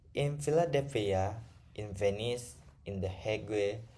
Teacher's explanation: the nasal sound changes in the place of articulation depending on the following consonant. but the other features of the nasal sound remaining the same. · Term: nasal assimilation